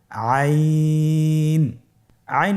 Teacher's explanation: আইন হরফটি উচ্চারণের সময় অবশ্যই তিন আলিফ টেনে পড়তে হবে। এখন আইন হরফটি বারিক হরফ। পাতলা করে পড়তে হবে। · আইন হরফটি কণ্ঠনালীর মধ্যখান থেকে উচ্চারিত হয়।